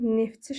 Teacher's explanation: Neftçi sözü hərfdən ibarət sözdür amma tələffüz edilərkən neftçi şəklində tələffüz edilir. Yəni t düşmüş olur. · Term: səs düşümü